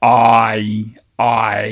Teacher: getting fronter in the vowel space we're at 2147. um so we start with ah which is low back in the space and then we get higher and fronter